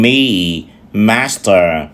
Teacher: ta có 3 âm đầu tiên là ba mũi bởi vì chúng ta chặn hơi là ở miệng âm nó lên mũi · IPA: /miː/ /mæs.tə˞/